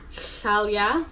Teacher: you're pushing your tongue on the top of your mouth there at the back and you're blowing out the sides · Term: LH